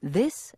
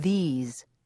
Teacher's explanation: the final sound of this is an S sound while the final sound of these is a z sound